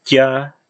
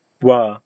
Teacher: I pronounced them as a palatal plosive and a labiovelar plosive.